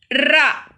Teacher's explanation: நாவின் நுனி மேல் அன்னத்தின் மையப்பகுதியை உரசுவதால் ரகரம் தோன்றுகிறது. இந்த ரகரம் வல்லின எழுத்து என்பதால் வல்லின ரகரம் என்று அழைக்கலாம்.